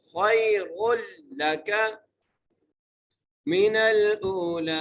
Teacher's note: نون لام سے پڑھنا ہے، نون کو لام سے ملانا ہے، حمزہ کو ایک الف مقدار کھینچ کے پڑھنا ہے اور آگے لام ہے، لام کو بھی ایک الف مقدار کھینچ کے پڑھنا ہے۔ · وللآخرۃ خیر لک، خا کو یا سے ملانا ہے، خا کو موٹا کر کے پڑھنا ہے اور را کو بھی موٹا کر کے پڑھنا ہے، را کو لام سے ملانا ہے۔